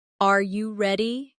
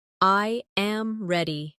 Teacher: The voice falls naturally at the end.